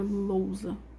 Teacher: Lousa, o O vai ser uma vogal. E a letra U vai ter que ceder para semivogal.